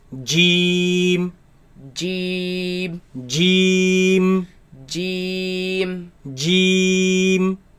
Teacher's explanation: This letter comes from the middle of the tongue against the middle of the upper palate.